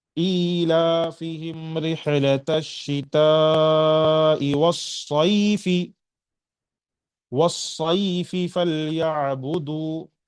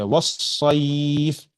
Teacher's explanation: حرف لین کے بعد حرف اصلی فا آیا ہے اور فا پر میں سکون دے رہا ہوں، اس وجہ سے یہ مد لین عارض کہلائے گا، اور یہاں 4 حرکات کے برابر کھینچنا ہے